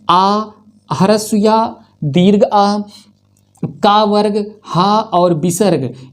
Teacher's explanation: आ, ह्रस्व या दीर्घ आ, का वर्ग, हा और विसर्ग, ये सभी कंठ से उच्चारित होते हैं।